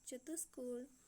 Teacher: विसर्ग जो है वो मूर्धन्य सा में परिवर्तित हो जाता है